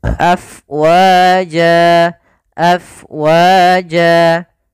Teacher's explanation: tanwin karena berada di akhir bacaan maka namakan dengan mad Iwat kalau dia wakaf maka berubah menjadi panjang sebagaimana mad tabii